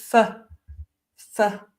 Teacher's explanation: f is unvoiced which means that we make the sound by blowing air through our teeth basically